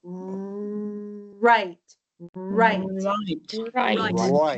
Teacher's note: making a little bit of a rounded circle with your lips on R